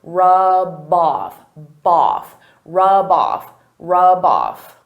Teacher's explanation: I can take that B sound and connect it to the next word